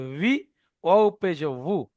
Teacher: অনেকে মনে করেন ওয়াও জের বি বলছি, বি বার মতো না। ওয়াও জের ভি, নিচের ঠোঁটের ভিজা অংশ সামনের উপরের দাঁতের আগায় লাগবে।